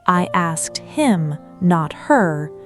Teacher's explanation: I asked him, not her, in which case the normal reduction disappears completely, and the pronoun suddenly regains its full, clear vowel sound, precisely because it is now carrying emphatic stress, rather than sitting quietly in the background.